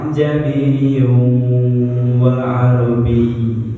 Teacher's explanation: Hamzah kedua dibaca pertengahan antara hamzah dan alif. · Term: tashil